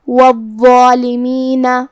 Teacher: حرف الضا کی ادائیگی زبان کے سر اور اوپر والے دانتوں کے اندرونی کناروں سے ہے، وا حروف التفخیم میں سے بھی ہے، تو ہم یہ حرف کو موٹی آواز میں ادا کریں گے جو کہ اس پہ تشدید ہے، لہذا 2 حرف کے برابر ہمیں وا کو پڑھنا ہے اور اس پہ کھڑا زبر بھی ہے، تو یہاں مد الف ہوا۔ · ہمیں ضا کو اور مد الف کو دونوں کو بھاری آواز میں ادا کرنا ہے